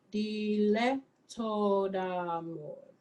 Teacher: Open the eh up more.